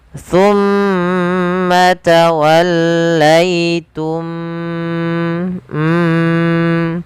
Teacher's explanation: masukkan mim yang pertama kepada mim yang kedua dan ditahan suara mimnya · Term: idgham mimi